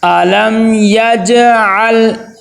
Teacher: علم یجعل، آگے عین کو لام کے ساتھ ملائیں گے تو لام کے اوپر قلقلہ نہیں ہونا چاہیے، یجعل، جیم کے اوپر تو قلقلہ ہوگا لیکن آگے دیکھیں لام کے اوپر قلقلہ نہیں ہوگا